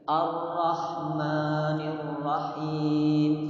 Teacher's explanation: A-nya tipis, ro-nya tebal. Jadi harus dibedakan mana tebal, mana yang tipis itu adalah a hamzatul wasal ya, itu namanya hamzatul wasal.